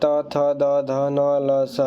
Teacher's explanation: इसके बाद त थ द ध न ल स, इसे दांत और जीभ से बोला जाता है, इसे दांत या दंत बोलते हैं।